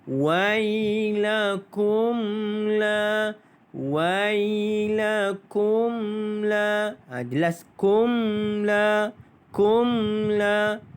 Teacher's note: Izhar syafawi bacaannya adalah jelas tanpa dengung.